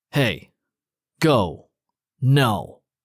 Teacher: That natural short angry exhalation where you drop your pitch on the angry word is the fourth tone in Mandarin.